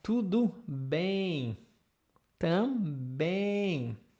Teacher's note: Aqui a ideia é o som, esse som nasal é um som um pouco mais longo, tá?